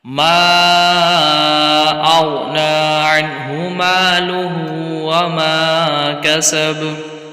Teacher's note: बा में कलकला करना है, लेकिन कलकला खूब ज़ाहिर होगा